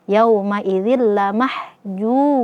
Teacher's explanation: Tanwin ya, di sini kasratain ketemu dengan lam, maka di sini hukumnya adalah idgham bila gunnah. Kita masukkan zalnya kepada lam zil tanpa disertai gunnah.